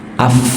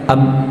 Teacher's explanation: Apalagi ketika dia sukun, af, tetap ada angin. Tapi ba, ab, nggak ada.